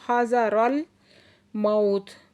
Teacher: वाव साकिन से पहले ज़बर है तो वावलीन नरमी से पढ़ेंगे और ता को साकिन कर देंगे।